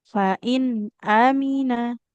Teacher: Di sini hamzahnya fathah tidak bertemu dengan alif. Maka nggak boleh dibaca panjang.